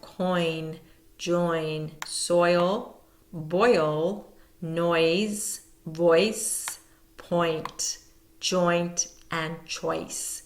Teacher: And then as you pronounce, just say oi to yourself. You can feel the different movements in your mouth. You're starting with one sound and ending in another. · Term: diphthong of oi